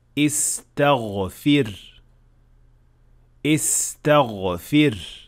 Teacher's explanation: Now the ta and the fa are both voiceless. So for some people it might be difficult to switch from voiceless, voiced, and then voiceless again.